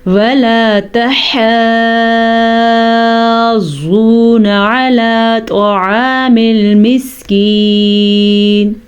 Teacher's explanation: مد کے بعد جب مشدد حرف آ جائے تو اس مد کو 6 الف کے برابر لمبا کرتے ہیں اور ضاد پہ ہلکا سا جھٹکا بھی پیدا کرتے ہیں کیونکہ مد کے بعد مشدد حرف ہوتا ہے.